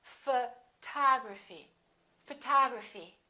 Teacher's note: we stress the second syllable we say photography this o also is reduced and also becomes this symbol a photography photography repeat after me